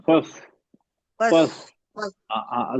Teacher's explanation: जबान को जड़ उठाना है ऊपर. जबान की जड़ उठाएंगे तो सौद बन जाएगा, यौमल जबान की जड़ को फस्ली नहीं उठाएंगे सीन हो फस्ली.